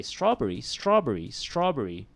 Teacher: there is no vowel in between the bur and the red